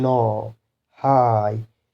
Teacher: it's an open vowel because it's not followed by any other sound. After this there is no any other sound, whereas no, same goes with this. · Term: open syllable